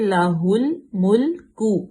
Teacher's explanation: اس کے بعد ہے لہ الملک، لام پہ زبر ہے، ہا کو لام میں ملائیں گے، ہل ملک، لام دونوں باریک پڑیں گے، ان کو ہم موٹا بالکل بھی نہیں کریں گے